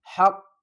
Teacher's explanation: حا کو ہم حل کے درمیان والے حصے سے ادا کریں گے اور قاف کو پر پڑھیں گے ، حق، اور قاف کو سختی کے ساتھ بھی پڑھیں گے،